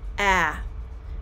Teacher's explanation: way than all of the other vowel sounds like i said our tongue is held lower in the mouth than any other vowel sound